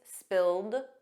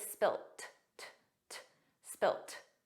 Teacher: In American English, it's always spilled, a soft D, but in British English, it's spilt